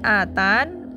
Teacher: Lalu ketika waqaf dibaca dengan dua cara, bisa atani artinya menetapkan ya, atau membuang ya menjadi atan gitu. Ketika waqaf dengan membuang ya dalam bacaan boleh dengan sukun sempurna berarti atan atau dengan raum.